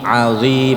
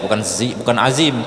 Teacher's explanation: lidahnya di belakang gigi seri atas sama dengan sa dan za